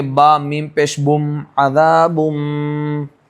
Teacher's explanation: تنوین کو یہ جو میم ہے اس سے بدل کر پڑھیں گے. نون کی جگہ پر ہم میم میم زیر میم, اس طریقے سے ہم ڈائریکٹ ملا کر میم بعدی عذاب بعید, اس طریقے سے ہم اس کو پڑھیں گے. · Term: اقلاب